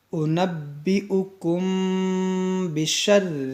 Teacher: میم ساکن کے بعد با ہے تو یہاں پر کیا ہوگا، اخفاء شفوی کا قاعدہ لگے گا، یعنی یہاں پر غنہ کریں گے